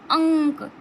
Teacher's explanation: अयोगवाह वर्ण, अयोगवाह वर्ण कौन से होते हैं, ये अंक और आहा को हम अयोगवाह कहते हैं, जिसमें से अंक जो है वो अनुस्वार है, आहा जो है वो विसर्ग है। ठीक, और अंक का जो उच्चारण स्थान है वो नासिका है, नासिक से अंक का उच्चारण होता है। आप अंक बोलिए तो हमारे नाक से ध्वनि निकलती, अंक नाक से निकल रही है।